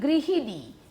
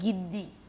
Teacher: আমরা সাধারণত যে দুর্বল শ্বাসাঘাত, আমাদের শ্বাসটা যেখানে দরকার হচ্ছে না, সেই সময় একটা মধ্যবর্তী ধ্বনি, স্বরধ্বনি লোপ পেয়ে যাবে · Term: মধ্য স্বরলোপ